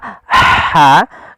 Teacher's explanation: huruf ha kecil yaitu kita mengeluarkan dari tengah tenggorokan kita